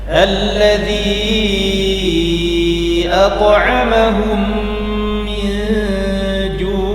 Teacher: Alladzi at'amahum min ju' ya, ada yang masih membaca 2 harokat ya. Kita jadikan 4 harokat alladzinya ya. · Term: mad munfasil jaiz